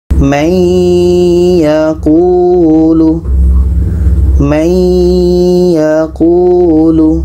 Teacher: Kita masukkan bunyi nun kepada ya dan dibaca dengan dengung. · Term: idgham bi gunnah